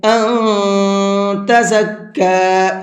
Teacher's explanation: 1 سے 3 یا 4 سیکنڈ تک کھینچنے کو 3 الف کے برابر کہا جاتا ہے۔ ان تزکا، یہاں نون ساکن ہے اور نون ساکن کے بعد میں تا ہے، اور تا اخفا کے حرفوں میں سے ہے، تو نون کے اندر اخفا کریں گے